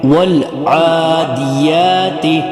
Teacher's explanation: اور عادیات کا عین جو ہے وہ بھی حلق سے ہوگا